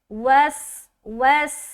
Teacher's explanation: यानी कि इस सीन में सीटी वाली आवाज़ झलकेगी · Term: सिफत सफ़ीर